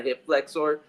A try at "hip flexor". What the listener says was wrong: I like how you say hip flexor because you're really pronouncing the OR at the end. Not flexor.